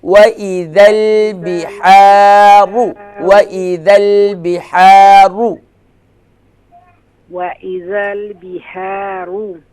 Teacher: بحارو را کے بعد واو نہیں ہے، صرف را کے اوپر ضمہ یعنی پیش کی علامت ہے. اسے اس لیے کھینچیں گے نہیں، شارٹ کریں گے